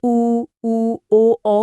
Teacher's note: उ ओ औ का उच्चारण करते समय होठ पूरी तरह से गोल हो जाते हैं। जिसे वृत्ताकार या राउंडेड कहा जाता है।